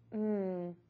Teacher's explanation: To make this consonant sound, your lips are pressed closed, the tongue is neutral in the mouth, and the airflow will continue and be directed through the nose. To make sure that is happening, you can actually put your hand under your nose and say the sound, mmm. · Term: M sound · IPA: /m/